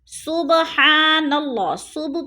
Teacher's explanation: الجبا پہ الف مدہ ہے، سبحان اللہ، صبح پہ قلقلہ ہو رہا ہے، با ساکن ہے اور حروف قلقلہ میں سے ہے تو اس کو ہلا کر پڑھنا ہے۔